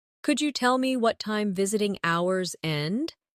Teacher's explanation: In connected speech, could you becomes could ya?